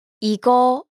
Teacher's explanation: notice the rising intonation to indicate a question